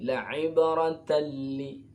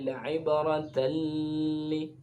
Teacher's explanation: tidak boleh didengungkan, tidak boleh ada gunnah, karena termasuk idgham bila gunnah atau disebut dengan idgham kamil.